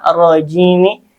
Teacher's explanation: alif lamnya syamsiyah dibaca idgham dan ro-nya dibaca tafkhim, itu tebal